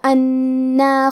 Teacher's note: کلمت انا میں حرف النون پہ تشدید ہے، تو ہمیں دو حرف کے برابر نون کو پڑھنا ہے